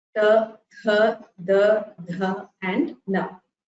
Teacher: Then we have Ta Varga or the dentals or Dantya Varnas. These are produced by the tongue touching the teeth. Ta, Tha, Da, Dha and Na.